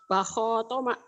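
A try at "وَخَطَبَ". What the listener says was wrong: Nggak ada yang panjang. Itu bukan mim, tapi tok. Ibu dari tadi ada mimnya melulu ya? Kan nggak ada mim. Wahotoa. Nggak ada mim melulu ya?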